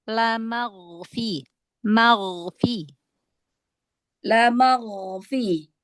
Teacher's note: huruf gin angkat lagi pangkal lidahnya biar tebal. Lamagfi. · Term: huruf ghoin